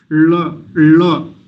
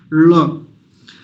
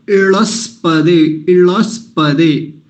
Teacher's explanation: ल का उच्चारण मूर्धा से करेंगे जहां से मूर्धन्य सकार का जहां से ट का उच्चारण होता है ऊपर जीभ में अपने मुख में जो गड्ढा जैसा होता है